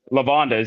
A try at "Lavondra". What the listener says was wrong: Lavondra with an R.